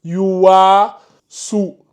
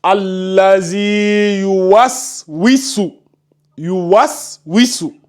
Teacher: Tu ne dois pas allonger le wa là. Tu ne dois pas dire yuwasu.